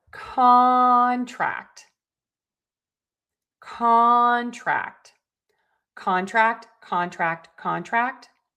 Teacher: So we know we are going to stress syllable number one